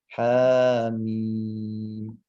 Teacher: Sedangkan ini hak kan nggak ada hak nun mati bertemu dengan mim ya. Jadi nggak boleh mendengung. Jadi biasa saja. Haknya 2 harokat, kemudian mimnya biasa.